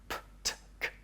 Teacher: we add air to the p, t and k sounds. They are aspirated sounds.